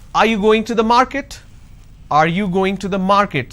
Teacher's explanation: when I say are you going to the market there is a rising tone